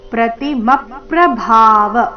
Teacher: ಭ ಮಹಾಪ್ರಾಣ ದೀರ್ಘ ಕೊನೆಗೆ ವ ರಸ್ವ